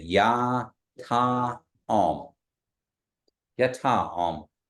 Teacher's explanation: And it goes up on both the Ya and the Ta, and then Om and goes down.